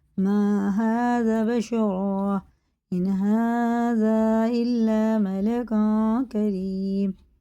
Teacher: یہ مد منفصل ہے، 4 الف کے برابر کھینچ کے پڑھیں گے